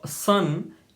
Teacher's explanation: S is alveolar in English